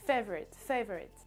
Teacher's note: vous avez l'accentuation sur la première syllabe